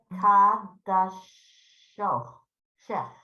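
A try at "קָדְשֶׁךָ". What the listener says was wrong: What do you see in the final chaf? So once in a blue moon, that final vowel will actually, the final letter will actually have a vowel to it, and you have to say it.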